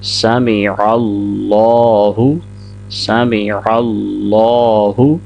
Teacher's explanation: عین کو لام کے ساتھ ملائیں گے اور لام کو 2 سیکنڈ لمبا کرنا ہے، اس کو موٹا بھی کریں گے